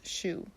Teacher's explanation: t sounds more like sh which means that two will be pronounced shu in irish